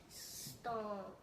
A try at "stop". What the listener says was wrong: Now this was stomp, but this is just stop.